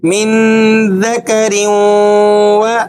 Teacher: را پر غنہ بھی ہو رہا ہے اور واو کا تشدید بھی ادا ہو رہا ہے